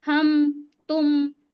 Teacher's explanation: जैसे हम पढ़ते हैं हम तुम, आवाज आ रही है नून की आवाज आ रही है, ना हम उसमें गुन्ना कर रहे हैं ना हम उसको छुपा रहे हैं, इख्फा भी नहीं कर रहे, हम सीधे मीम को जाहिर करके पढ़ रहे हैं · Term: इजहार शफवी